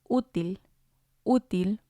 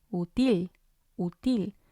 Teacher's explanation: we see the accents on the u so we're going to stress that one